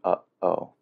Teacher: it's done so as a glottal stop or a short closing of the throat to cut off airflow for a moment